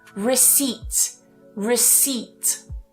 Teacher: So that P is silent there, not receipt.